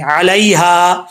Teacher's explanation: یا لین ہے یہاں پر، یا مدہ نہیں ہے، اس کو لمبا نہیں کریں گے ، یا لین کا مطلب ہوتا ہے لمبا کر کے نہیں